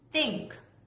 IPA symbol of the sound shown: θ